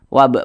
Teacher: Nah, huruf ba ini kan dia sukun berarti menjadi B. Kemudian karena dia qalqalah maka B-nya itu dipantulkan. Wab mantul seperti itu, dan dia termasuk kepada qalqalah sugro atau qalqalah kecil karena dia berada di tengah bacaan.